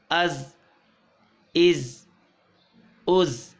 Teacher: حمزہ زا زبر از، حمزہ زا زیر از، حمزہ زا پیش از، از از از. جی بزلنگ ساؤنڈ ہے. زا ہے، رال نہیں